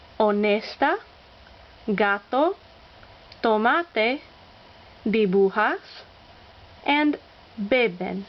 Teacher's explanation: They are all pronounced with the accent on the second to last syllable. Simply count back from the end.